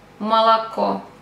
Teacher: so the First two O We have to pronounce Like a